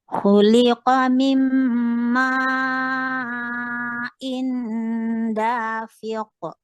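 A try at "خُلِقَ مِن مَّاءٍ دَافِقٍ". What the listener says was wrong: Jangan habiskan inda. Kalau inda ditekan hidungnya maka diam dia. Ikhfa itu masih ada celah. Khuliqa min ma'in da. Inda, bukan inda. Coba sebut inda itu ambil pencet hidung. Nah, itu habis namanya. Itu habis namanya, itu enggak boleh. Khuliqa min ma'in. Masih ada keluar. Kalau habis itu namanya. Enggak boleh. Coba sambil pencet.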